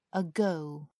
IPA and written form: əˈɡəʊ (ago)